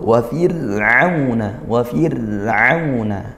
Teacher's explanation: Nah, ini di sini ada kasrah diikuti sukun, fir'auna. Nah, maka ra sukunnya karena dahulu kasrah, maka dibaca tarqiq tipis seperti itu ya. Maka kita turunkan pangkal lidahnya, fir'auna, bukan fir'auna, itu tebal seperti itu.